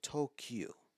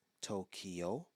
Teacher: the only difference is the final vowel sound it's not a u but an O